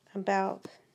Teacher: the next vowel is the unstressed a or schah sound like in the word about this one can be tricky to make it's an upside down